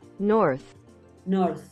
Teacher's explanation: Y al final se escucha más como una Z, mira. North. North. Emites más viento.